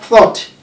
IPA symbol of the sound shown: θɔ:t